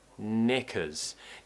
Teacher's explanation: We start with a N sound, N. Tongue up against the top of the mouth and make the noise through your nose.